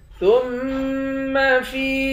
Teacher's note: فا کو میم کے ساتھ ملا کر میم مشدد پر غنہ کریں گے، فا کو یا کے ساتھ ملا کر یا کو ایک الف کے مقدار کھینچ کر پڑھیں گے۔